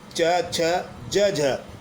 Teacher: स्पर्श संघर्षी व्यंजन में वायु पहले मुख अवयवों को स्पर्श करती है फिर रगड़ खाते हुए बाहर निकलती है।